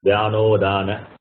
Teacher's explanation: A plus U becomes O, Vyano, Udana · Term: sandhi